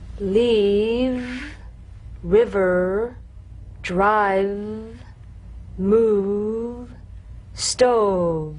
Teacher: You'll feel a gentle, dark, buzzing vibration on the lower lip.